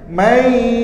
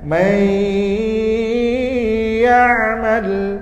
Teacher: nun mati ini dimasukkan kepada huruf ya, dicampurkan nun mati dan huruf ya, lalu diiringi dengan dengung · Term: idgham bi gunnah